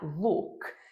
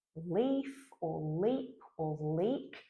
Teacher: So if we choose a word like leaf or leap or leak, they might encourage the lips to stay spread, because after we go from the L, we're transitioning to a high front vowel where our lips need to be spread.